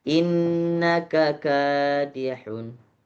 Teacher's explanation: K pertama pendek, K dua panjang